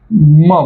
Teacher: म या अनुनासिकाचा उच्चार करताना दोघं ओट एकत्र येत आहे आणि हवा ही नाकावाटे बाहेर सोडल्या जात आहे